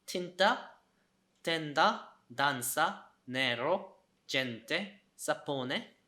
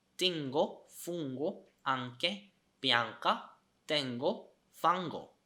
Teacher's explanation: N is an alveolar nasal. An Ng sound is a velar nasal.